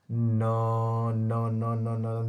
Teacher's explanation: नाक से बोल के देखिए न पांचवा अक्षर हो रहा है कि नहीं हो रहा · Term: अनुनासिक व्यंजन